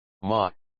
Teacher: two second tone a rising tone like the sound of asking huh or what